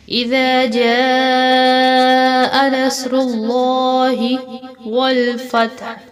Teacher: اذا جاء نصر اللہ والفتح، یہاں پر نصر اللہ پر جو گرین حروف ہیں ان سب کو پر کر کے موٹا کر کے پڑھیں گے، اور جیم کے اوپر مد ہے اس کو 4 الف جتنا لمبا کر کے پڑھیں گے کیونکہ بڑی مد ہے